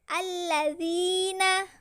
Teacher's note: huruf alif lam bertemu huruf samsiyah lam dibaca idgham atau masuk ke huruf lam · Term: alif lam samsiyah